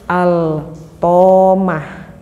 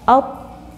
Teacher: Tetapi jika diidghamkan macanya, dimasukkan lam ini kepada huruf to, sehingga lamnya tidak nampak terdengar jelas oleh kita